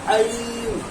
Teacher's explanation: عین کو بیچ حلق سے ادا کرنا